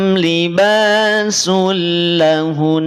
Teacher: maka tahan dulu jangan langsung dilepas ya karena terdapat Gun gunah tahan dua harakat